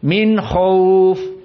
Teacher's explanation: jumhur dari Arab membacanya izhar dan kelompok dari Arab tidak mampu membacanya kecuali ikhfa Min khauf